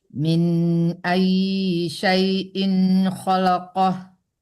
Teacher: In tidak dengung, dipercepat ya